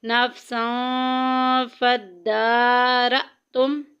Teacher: نفساں فدارتم، نفساں دا کے اوپر کھڑی زبر، دال کے اوپر کھڑی زبر آ گئی ہے، ایک الف کے برابر لمبا کریں گے۔ فدارتم حمزہ ساکن، پورے قرآن پاک میں جدھر بھی آئے گی جھٹکا دے کے پڑھیں گے۔